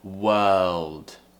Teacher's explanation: So we're not completely doing a L. We're going up as if we're going to start the L sound, but we don't complete it. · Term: half-finished L